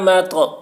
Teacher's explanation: تو حروف قلقلہ میں سے ہے اور اس پر جزم ہے، اس لیے تو میں قلقلہ ہوگا